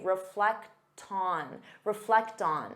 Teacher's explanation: because you have that t sound you can transfer it to the next sound and say reflecton reflecton so it sounds like one word